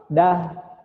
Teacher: huruf H Ini adanya di tenggorokan paling bawah bukan ada di dada